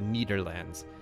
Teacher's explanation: they use a d because they can't say the th sound